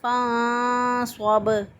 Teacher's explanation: صاد جو ہے اور سین میں فرق یہی ہے کہ صاد کی آواز میں بھی سیٹی کی آواز آتی ہے اور سین میں بھی سیٹی کی آواز آتی ہے، لیکن سین جو ہے وہ باریک ہوتا ہے اور صاد جو ہے وہ موٹا ہوتا ہے